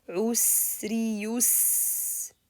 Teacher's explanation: You see the رخاوة, elongate the sound a little bit.